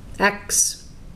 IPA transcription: æks